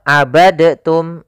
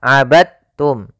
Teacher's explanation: termasuk huruf Qalqalah karena dia memiliki makhraj yang sama dengan Ta Maka diidghamkan dalnya kepada huruf ta sehingga dibaca dengan huruf tanya